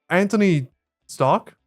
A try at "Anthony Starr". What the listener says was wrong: You said Stark again, yeah. No H in Anthony too. It's Antony or like Anthony and